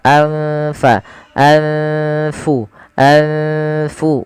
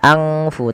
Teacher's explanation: Cara membacanya adalah nunnya disamarkan kepada fa. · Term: bacaan ikhfa